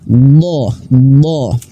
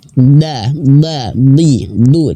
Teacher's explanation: jadi lidah pangkal lidahnya terangkat itu artinya tebal tafkhim